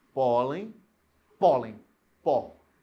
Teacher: Esse pó, ele é uma sílaba forte. É a penúltima. Recebeu acento.